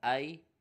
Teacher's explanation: یا ساکن سے پہلے زبر ہے، یا لین ہوگا، بغیر کھینچے پڑھنا ہے